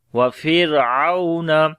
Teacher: او یہاں پر واو لین ہے، نرم پڑھیں گے